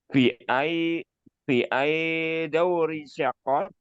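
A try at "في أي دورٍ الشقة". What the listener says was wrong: Daurin asyaqqah ya di sini tanwin. Daurin asyaqqah.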